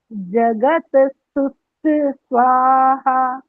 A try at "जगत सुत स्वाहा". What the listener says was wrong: स्वाहा में बड़ा आलाप लगा दिया, बढ़िया बढ़िया। गलत है, अभी भी ठीक नहीं है ये।